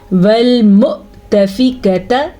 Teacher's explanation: یہاں پہ واو نہیں پڑھا جائے گا بلکہ حمزہ پڑھا جائے گا، اور وہ بھی ساکن کے ساتھ